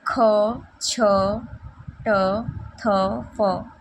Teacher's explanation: ये महाप्राण, मुख से अधिक हवा निकलता है और ये अघोष में आता है।